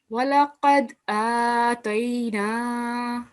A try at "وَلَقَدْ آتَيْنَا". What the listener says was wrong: Okay, this is dal, and do you know any specification about this dal? Yes, it is a kalkala letter, and you have to give a jerk to this dal.